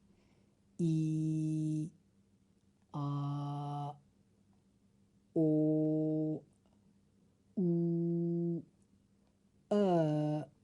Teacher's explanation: ان میں کوئی اتار چڑھاؤ نہیں ہے، بالکل لیول میں آوازیں ہیں، لمبی آوازیں ہیں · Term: لانگ واولز